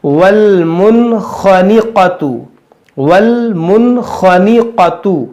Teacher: देखो, यहाँ नून साकिन है और नून साकिन के बाद हुरूफ-ए-हल्की से 'खा' है। इसलिए, हम यहां इज़हार का नियम लागू करेंगे। हम इसे बिना गुन्नाह के पढ़ेंगे। वल मुन खानिकत, देखो यहां दो हुरूफ-ए-मुस्तलिया-खा और काफ भी हैं। · دو حرف مستعلیہ بھی ہے خا اور قاف، اس کو موٹا بھی کریں گے اور اس میں کچھ ہم نہیں کھینچیں گے کیونکہ سب متحرک ہے.